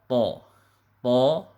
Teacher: makharijul hurufnya ujung lidah ditempelkan ke pangkal gigi di atas. Ya, sama dengan huruf ta. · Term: huruf to